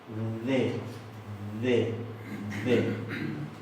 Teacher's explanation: Y esa es una D suave. Siempre interdental, siempre fricativa. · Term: D interdental